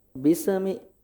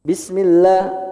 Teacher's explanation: Sinnya jangan ada pantulan Pak ya.